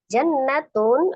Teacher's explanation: Jannatun ada nun tasdid, nun musaddadah wajib gunnah akmal matakun, paling sempurna ya tingkatan gunnahnya wajib gunnah nun tasdid.